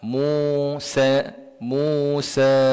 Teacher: Maka kita kena panjang dengan kadar dia empat ataupun lima harakat. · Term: mad jaiz munfasil